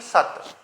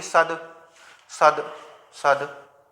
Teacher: जब ता का उच्चारण हो रहा है तो आपके इन स्वर तंत्रियों में कंपन नहीं हो रहा, तो इसीलिए ता आपका क्या है, अघोष है।